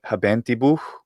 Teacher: So you have a sh, and then it's debuccalized, so it goes out from the mouth, out of the bocca, and then just becomes a ha, habentibuh, and then maybe it's dropped entirely to a habentibu.